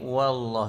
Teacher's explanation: Seperti biasa bacaan tebal pada laf jalalah. Wa nipis lagi. Allah tu ditebalkan.